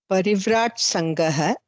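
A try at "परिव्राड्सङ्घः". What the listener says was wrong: Ta ta da. So we have to come to dakara. Parivrad Sangha.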